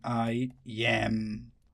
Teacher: So I is unstressed while am is stressed.